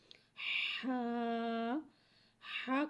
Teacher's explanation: ہا، ہا کو ایک الف یعنی 2 حرکات کے برابر کھینچ کے پڑھتے ہیں۔ ہا حرف حلقیہ ہے، حلق کے درمیان والے حصے سے ادا ہوتا ہے۔